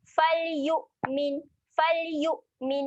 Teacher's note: hamzah ketika mati sifat dia tahan. Okey, jangan ada lantunan. Kita tahan bunyi hamzah mati.